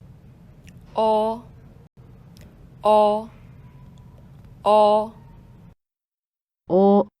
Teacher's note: O is a semi High vowel